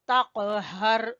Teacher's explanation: कॉफ के ऊपर हल्का सा कलकला करेंगे, तक़हर। हा, ये वाली हा जो है ये हलक के सबसे आखिरी हिस्से से अदा होगी, तक़हर।